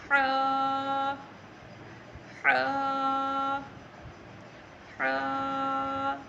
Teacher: زیادہ نہیں کھینچنا، صرف ایک الف کے برابر یعنی ایک انگلی کے برابر آپ نے اس کو کھینچنا ہے. اور جو ہا ہے یہ آپ کے حلق کے درمیان والے حصے سے ادا ہوتا ہے.